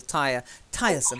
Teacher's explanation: Yeah, it's more the stress. The stress is on the first syllable.